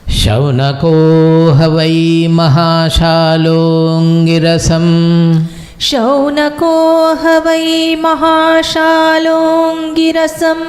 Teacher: Actually, it is mahashalaha angirasam. But because that A is dropped, it is mahashal, the visarga is dropped, mahashalongirasam